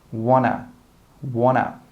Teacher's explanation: And we don't say 'want to.' We also join them together and we say 'wanna'.